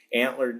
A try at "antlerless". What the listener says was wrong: Sorry. You're saying antler. It's antlerless, buddy.